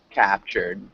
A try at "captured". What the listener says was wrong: D. Make sure you get that D at the end.